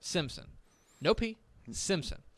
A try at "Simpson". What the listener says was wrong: There is a P. Yeah.